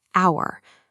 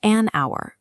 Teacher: While it begins with a consonant letter, it's pronounced with a vowel sound. Because the H is silent, it functions as our.